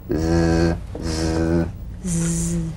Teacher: The Z cognate S, a voiced S sound fricative. The tongue rim should gently touch the upper gum ridge.